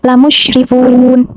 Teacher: dibacanya itu panjang 2 sampai 6 harokat dengan mematikan huruf nun di akhir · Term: mat arid sukun